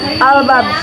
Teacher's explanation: Cara membacanya dipantulkan lebih tebal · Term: qalqalah kubro